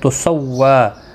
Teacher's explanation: واو کے اوپر کھڑی زبر ہے، ایک الف کی مقدار کے برابر کھینچ کر پڑھیں گے